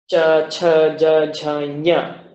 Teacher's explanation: But when I say the letter cha, it feels to me like the contact is happening in the front of the mouth. The contact seems to be happening somewhere behind the teeth.